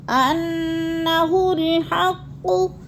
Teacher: انا کی نون مشدد ہے، سختی سے جمع کر پڑھنا ہے، اور انا نہیں پڑھنا کیونکہ ادھر زبر ہے، زبر کو لمبا نہیں کرنا